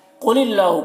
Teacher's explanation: قاف کو پر پڑھنا ہے، حروف مستعلیہ میں سے ہے